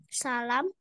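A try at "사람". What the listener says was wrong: Saram ya, bukan salam. Sa, sa, sa, ram.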